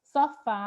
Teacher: A palavra sofá, o fá é a sílaba tônica. Se é a última sílaba, eu devo classificar como oxítona.